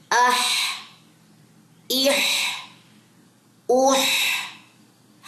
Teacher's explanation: ہا واضح ہو، گلے کے درمیان سے نکلتا ہے یہ